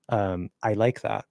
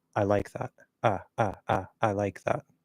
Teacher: But in the A and the I, you can cut the diphthong, which means that you actually don't need to use the second part of the diphthong, or we'll just like partially move to the second part and not finish it